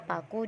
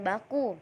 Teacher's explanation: Bunyi kedua yaitu P, konsonan bilabial hambat tak bersuara